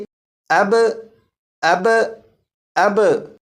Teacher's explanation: اور یہاں پر با ساکن ہے، اور با حروف قلقلہ میں سے ہے، جب حروف قلقلہ ساکن ہو تو ان میں قلقلہ خوب ظاہر ہوگا، تو یہاں پر با ساکن میں قلقلہ کر کے پڑھیں گے